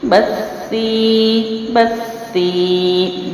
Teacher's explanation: یا ساکنہ سے پچھلے حرف کے نیچے زیر ہو تو یا مد ہے۔ ایک الف لمبا کرتے ہیں اور یا ساکنہ حروف مدہ یعنی وقف میں آ جائے تو ان کو ایز اٹ از پڑھتے ہیں، یعنی ایکول 1 الف ہی اس کو لمبا کیا جاتا ہے۔